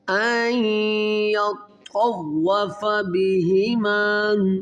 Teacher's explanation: یہاں پر ادغام غنہ کیا جائے گا، نون ساکن کے بعد حروف یرملون میں یا ہے ، تو پہلے اس حمزہ کو اس یا کے ساتھ ملائیں